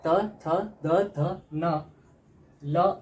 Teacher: दंत से त वर्ग त थ द ध न ल और स का उच्चारण होता है